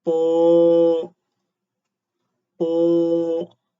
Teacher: the first tone, high and level